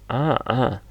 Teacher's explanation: kalau a agak ditekan sedikit seperti mengejan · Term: Ain